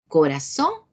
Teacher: lleve la fuerza de voz en la última sílaba